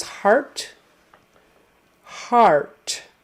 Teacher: The middle sound in heart is the same as the middle sound in hard. It's an AR, vocalic R sound.